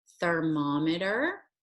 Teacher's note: he has his tongue stuck out just a little bit protruding in front of his two front teeth and to make that sound you're gonna push air through there because it is a unvoiced sound